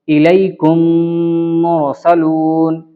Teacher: میم ساکن کے بعد میم آئے تو میم کو میم سے ملا کر غنہ کے ساتھ پڑھا جائے گا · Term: ادغام شفوی